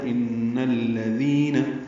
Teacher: ان میں نون مشدد پہ غنہ ہے، ان نون کو الذین کے لام سے ملانا ہے. ان الذین ذال نرمی سے پڑھنا ہے اور ذی یا مدہ ہے، دو حرکات لمبا کرنا ہے